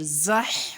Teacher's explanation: زا کی آواز سیٹی والی ہوگی، حا کی آواز حلق سے نکلے گی، اور اس ہا کی آواز بھی حلق سے نکلے گی۔